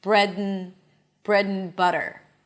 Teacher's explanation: So the a as in cat is reduced to a neutral sound, to the schwa. And instead of and, we say n. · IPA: ən